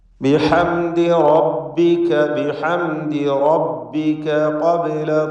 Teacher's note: ഖബ്ല എന്നതിലെ ബാഇൻ്റെ സുക്കൂൻ ഖൽഖല സുഗ്റ നൽകി ശബ്ദം ഹറക്കത്ത് പോലെ വ്യക്തമാക്കുക.